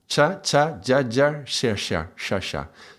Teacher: The tongue is very far back, it's palatal sound. So remember the palatal is like the cha-cha.